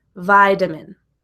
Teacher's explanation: The first vowel sound to be stressed is the I in vitamin. So the other vowel sounds, like the A, is the schwa, vitamin.